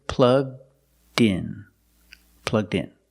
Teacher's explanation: The D sound at the end, plugged, link with the next word, in. So you hear din, din.